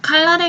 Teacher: 칼날의 경우는 유음화가 일어나서 앞 음절의 종성 리을의 영향을 받아서 뒤 음절의 초성 니은이 리을로 교체가 되었습니다.